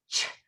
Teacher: if you touch your vocal cords, we know that ch, our vocal cords do not vibrate. It's an unvoiced sound.